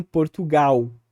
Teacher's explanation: o L final, que no português brasileiro é predominantemente pronunciado como uma glide ou como uma semivogal, vamos dizer assim, que seria um U.